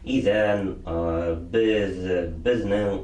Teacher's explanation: очень широкое использование межзубного звонкого звука «the»